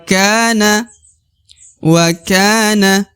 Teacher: Ka dibaca 2 harokat di sini karena di depannya terdapat alif